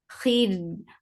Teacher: kha is heavy. For kasra give E sound attached with ra.